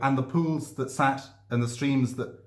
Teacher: seven pairs of syllables with the stress falling on the second syllable each time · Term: iambic septameter